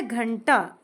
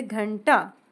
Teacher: इसमें ण आधा है। इसे हम ण के रूप में पढ़ेंगे। अब उसका साउंड थोड़ा न जैसे आता है। जैसे घंटा। अब ये आता है ट वर्ग के अंतर्गत।